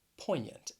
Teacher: a word whose pronunciation just does not match the spelling poignant you have a silent g and then that a-n-t it just sounds like yant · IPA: ˈpɔɪn yənt